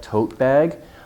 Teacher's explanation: long vowel stress on the first part